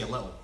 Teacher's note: You never put the T in little